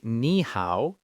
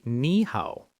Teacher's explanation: when two third tones are together, it's hard to say. So we change the first one to a rising second tone. So you don't say ni hao, you say ni hao.